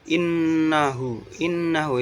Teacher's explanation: gunnah karena ada tasjid